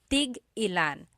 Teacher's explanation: So tig-ilan, when there's a hyphen in it, you have to have that glottal stop.